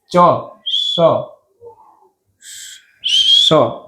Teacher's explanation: સ, આમાં સીટી વગાડશે થોડી. આ સકાર બોલવામાં તમારી થોડીક સીટી નીકળશે. ચ, સ, એ સીટી નીકળશે થોડીક તમારા મોઢામાંથી. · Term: તાલવ્ય સકાર